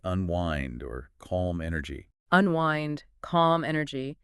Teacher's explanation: The pitch drops a bit at the end. Right. That downward intonation signals relaxation, ease.